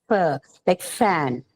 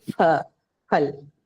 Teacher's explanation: For us, the pha in the word phal is a bilabial sound, but that sound is absent in English. What we have in English is pha, like fan, right?